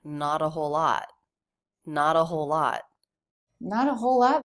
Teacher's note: not and lot both have the ah vowel as in Father